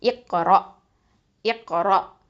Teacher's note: இந்த ரா ஃபத்தா வந்து ஹெவியாக தான் உச்சரிக்கணும்